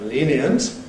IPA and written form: ˈliːniənt (lenient)